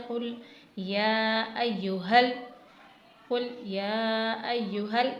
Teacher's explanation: हा को सीने से अदा करना है हा नहीं बनाना इसे ह कुल या अु हल काफिरून नहीं हल काफिरून पढ़ना है अरबी लेटर्स में दो तरह से हा होते हैं।